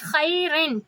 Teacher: پھر ہے من کو بھی ہم اسی طرح پڑھیں گے، نون کے لیے ہم اوپر تالو سے زبان لگائیں گے، خیرن، کیونکہ آگے خا ہے، رگڑ کی آواز آئے گی